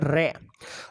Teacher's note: प्रकंपित या लुंठित व्यंजन एक होता है और वो है रे। रे का उच्चारण करने पर जीभ में सबसे ज्यादा कंपन होता है